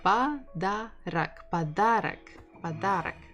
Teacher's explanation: So stress the second syllable, подарок. And it means that this one we will pronounce as A, and this one we will also pronounce as A because they are not stressed.